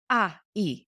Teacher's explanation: he doesn't close his lips he doesn't move his tongue he's not moving his jaw he's just making the sounds the open mouth vowel sounds